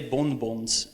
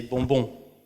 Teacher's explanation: Because the N doesn't get pronounced, it tells you that the vowel turns into a nasal vowel.